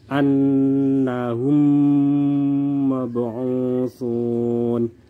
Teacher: Di sini mim sukun bertemu dengan mim, maka mim di sini melebur ke dalam mim yang berikutnya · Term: idgham mislain